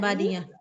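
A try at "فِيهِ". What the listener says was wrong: Iya, fihi, hi-nya nggak panjang.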